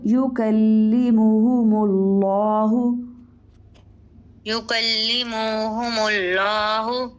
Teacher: لام اس میں جلالہ کو موٹا کیجیے